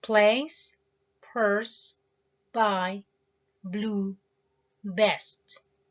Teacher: All right, after having understood all of this about places of articulations, now let's move on to some examples. Bilabials, that's the p and b sounds.